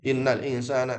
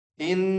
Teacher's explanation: Pertama yaitu nun yang bertasydid. In dia punya hukum namanya ghunah, yaitu dengung yang dipanjangkan. Enggak boleh buru-buru.